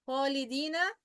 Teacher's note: خ حرف من الحروف المفخمة ولا يصح أن تنطق مرققة.